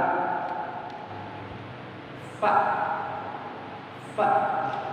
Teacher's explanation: ujung gigi seri atas bertemu dengan perut bibir bawah bagian dalam